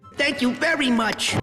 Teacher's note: giving Mort that panicked, nasal, always a little too close to a breakdown vibe